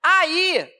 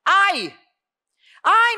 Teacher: Esse i é tônico faz iato com a vogal anterior está sozinho na sílaba a regra é do iato do i do U ela cai